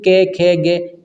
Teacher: जो हवा है स्पर्श करके निकले उन्हें हम स्पर्शी व्यंजन कहते हैं